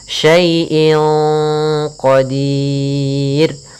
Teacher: Kemudian inqa ada kasratain atau kita namakan dengan tanwin an inun bertemu dengan qaf, maka kita namakan dengan ikhfa. Cara membacanya samarkan kepada qaf, dan qaf termasuk huruf tebal, maka ikhfa-nya agak ditebalkan.